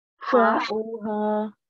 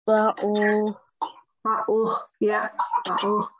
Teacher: Ayn, it's coming from your throat.